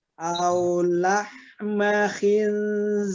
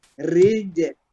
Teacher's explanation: ro disukunkan karena wakaf dan yang sebelumnya berharkat kasroh, maka ro-nya kita baca tipis. Aulah khinzir. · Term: dibaca tipis